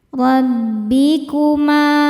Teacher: dibaca secara tafkhim karena berharakat fathah. Cara bacanya ditebalkan.